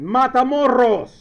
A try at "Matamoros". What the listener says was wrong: That's not how you pronounce it. That's not how you pronounce it. Matamoros. With a soft R. exactly. Exactly. no, No, you don't.